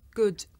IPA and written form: gʊd (good)